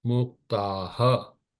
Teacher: Always the visarg repeats the vowel except in couple of cases. Here after a it becomes aha.